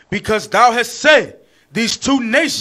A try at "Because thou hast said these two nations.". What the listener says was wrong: These two nations. You got to stretch that. Read it again.